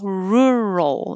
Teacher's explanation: My tongue is curled back for the R, the whole time until the L, rural, and then goes up and finishes in the L position